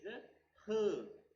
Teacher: Vocal cords are drawn wide apart, and then the air coming from the lungs, it passes through that wide gap without any friction. It passes through that gap spontaneously and clearly. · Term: glottal